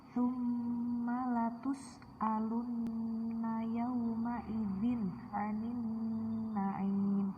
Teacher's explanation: Gunnah nun dan gunnah mim masing-masing dibaca selama 2-3 harokat atau ketukan.